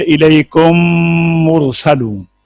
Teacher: میم ساکن کے بعد دوسری میم آ جائے تو پہلی میم کو دوسری میم میں ملا کر مثل ایک میم مشدد کے غنہ کے ساتھ ادا کریں گے، جیسے الیکم مرسلون، تو اس میں ایک الف کی مقدار میں غنہ ہوا کیا گیا ہے۔ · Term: ادغام